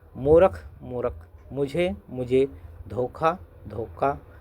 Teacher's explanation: महाप्राण ध्वनियों का अल्पप्राणीकरण काफी ध्वनियों में दिखाई देता है।